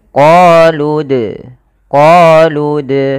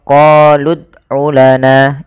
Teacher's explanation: Kemudian pada lafal dal sukun, di sini ada bacaan kita namakan dengan qalqalah. Dalam pelafalannya kita harus memantulkan dalnya.